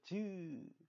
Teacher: 소리를 내면 혀가 아예 툭 떨어지지 않고 위에 좁은 틈을 계속 만들고 있는 걸 알 수 있어요. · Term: 파찰음